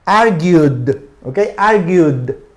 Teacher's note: Hay un diptongo y no termina en D, por lo tanto se pronuncia como D